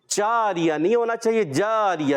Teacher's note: جیم کی ادائیگی کلیئر رکھیں گے، جیم کو چے کی طرح نہیں پڑھنا، یعنی مکسنگ نہیں کریں گے، جاریہ نہیں ہونا چاہیے، جاریہ، جیم کی آواز کلیئر۔